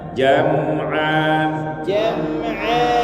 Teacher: Kan naik jim ya. Nyentuh langit-langit atas.